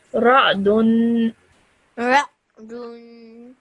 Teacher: And again, this tanween at the end, this dhammaten, you have to produce that extended nasal sound at the end.